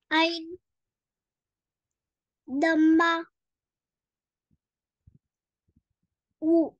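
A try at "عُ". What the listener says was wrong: आइन, आइन को गहरा करें गले के दरमियान से। आइन दमा उ, ऐसे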